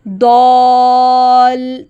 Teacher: ضاد کے ساتھ الف مد ہے اس لیے اس کی آواز کو 2 حرکے کے برابر لمبا کرتے ہیں